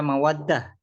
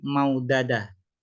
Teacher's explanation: Seharusnya mawaddah ini dibaca mawaddah bil idghami dengan idgham, bukan maudadah.